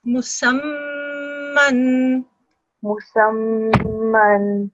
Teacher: there's a mim sound. It needs to be extended and made for about 2 seconds. Don't do it for less than 2 seconds.